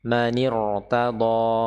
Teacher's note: Di sini huruf ro terbaca tebal.